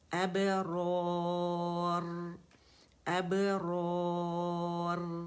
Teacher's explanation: مد عارض لسکون بن رہا ہے تو 4 کاؤنٹ سے ہم نے کھینچنا ہے